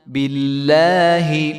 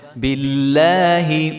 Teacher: یہاں پہ لفظ اللہ کلام جو ہے وہ باریک ہوگا